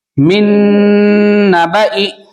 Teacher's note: پہلا نون نہیں پڑھیں گے، ڈائریکٹ دوسرے نون میں ملائیں گے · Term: ادغام نون